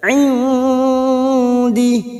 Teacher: Kita samarkan bunyi nun sukun, mendengung dan siap membaca huruf berikutnya yaitu huruf dal. Indi. Kita samarkan atau kita dengungkan selama 2 atau 3 harokat. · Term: ikfa hakiki